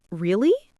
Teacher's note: if you say, really? In a flat tone, it sounds uninterested.